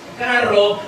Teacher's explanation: sabemos que la fuerza de voz está en la primera vocal, carro, pero no le estamos poniendo ninguna rayita, ninguna tilde.